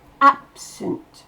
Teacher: Dans absent, c'est ab qui explose. Le sunt, on l'entend quasiment pas. Le E ne se prononce pas, ça fait sunt.